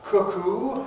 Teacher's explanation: Cuckoo has to have long oo at the end.